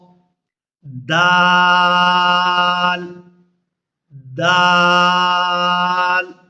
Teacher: دال کا اور تا کا مخرج ایک ہی ہے، زبان کی نوک اور اوپر والے دانتوں کی جڑ